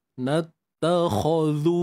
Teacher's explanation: Untuk kho tebal, pastikan kita angkat pangkal lidah.